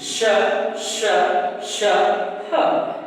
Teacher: यहाँ पर आप महसूस कर रहे हैं कि गरम गरम हल्की हल्की हवाएं निकल रही हैं, इसलिए इसे उष्म व्यंजन कहा जाता है